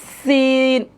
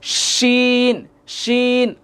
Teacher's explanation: সিন, জিহ্বাটা দাঁতের সাথে লাগবে, সিন। আর শিন যখন বলবে তখন জিহ্বা কখনো দাঁতের সাথে লাগবে না, দাঁতের এই যে ভিতর থেকে যে দিকটা লাগবে না, একটু ভিতর থেকে উচ্চারণ হবে শিন, শিন।